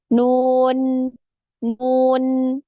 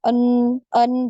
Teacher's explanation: ketika mengucapkan huruf nun ada ghunah yang keluar dari kisyum